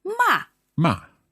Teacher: the fourth tone is sharply done